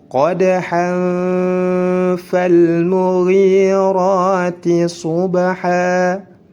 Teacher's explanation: Jika hurufnya huruf fa, maka disamarkan. Maka para ulama menyebutnya dengan ikhfa hakiki. Harus disamarkan tanwinnya.